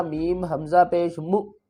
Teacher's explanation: زیر بی، ہم بی، میم کو حمزہ سے ملائیں گے اور حمزہ کے اوپر جھٹکا دیں گے، حمزہ کو جھٹکے سے پڑھیں گے ، کس طرح، میم حمزہ پیش مو، میم زیر می، بی